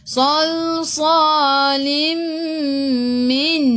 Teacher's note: Lim tanwin tak sama, tengok selepasnya ada mim di atasnya ada sabdu masuk ke dalam mim dan dengung 2 harakat. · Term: Idgham ma'al gunnah